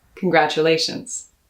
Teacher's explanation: emotion and i like to use that to harness my pronunciation i stress that a in congratulations that's the fourth of five syllables